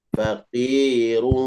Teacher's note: Minimal 2 harakat di idgham biguna. Faqirun. Idgham biguna disertai dengan dengung.